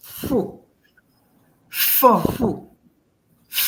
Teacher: No, fu. No, the two lips must actually come together. The upper and the lower lip must come together.